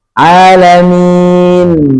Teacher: Padahal nggak perlu mingkem karena ujungnya huruf nun. Nun diperoleh dengan cara menyentuh ujung lidah ke langit-langit gusi gigi seri atas.